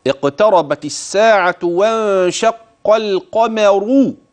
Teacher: نعم، انتبه لراء القمر، اقتربت الساعة وانشق القمر. إذا راء كلمة القمر إذا وقفت فهي مفخمة، وإذا وصلت فهي مفخمة